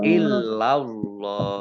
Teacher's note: Lam fathah, kemudian Allahnya dibaca tebal karena harokat di depannya fathah